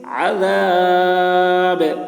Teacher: گا، تو با میں جب جزم آ جائے گا تو پھر با میں قلقلہ ہوگا، با کی آواز ڈبل نکلے گی